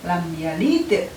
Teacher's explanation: Ketika da masuk dalam lahadid sifat hurufnya, maka da ini masuk di dalam jahr atau tertahannya nafas. Kemudian da juga masuk di dalam sidah atau tertahannya suara.